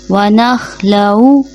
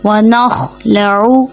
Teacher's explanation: خا حلق کے اوپر والے حصے سے ادا ہوگا، اور خا موٹے حرفوں میں سے، اس لیے اس کو ہم موٹا ادا کریں گے